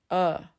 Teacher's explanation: The schwa is the most frequent vowel sound in English, not A, not E, the schwa. It's the neutral little uh in the middle of your mouth